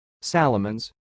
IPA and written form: 'sæləmənz (Salomon's)